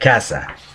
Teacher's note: In Latin America, there is no distinction, so C, Z, and S all sound the same, like an S.